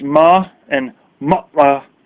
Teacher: what you just heard me go when I said ma or ma'a, that's a glottal stop